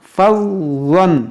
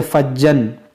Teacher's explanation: آپ کو ضا موٹا پڑھنا ہے اور نرمی سے ادا کرنا ہے